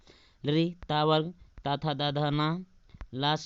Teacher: ता था दा धा ना ला सा दंत से बोले जाते हैं